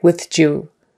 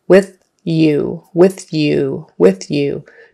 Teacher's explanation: avoid touching your tongue anywhere on the top of your mouth before it gets to the Y in the back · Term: Y sound